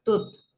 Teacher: Kalau saya bilang tut, itu pasti nggak getar ya, karena nggak ada udara yang keluar